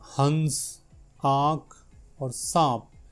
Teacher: इनका जब हम उच्चारण करते हैं तो हवा नाक के साथ साथ मुंह से भी अधिक मात्रा में बाहर निकलती है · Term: अनुनासिक